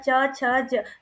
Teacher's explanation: तालु को हमारी जीभ टच करती है, छूती है, स्पर्श करती है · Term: च वर्ग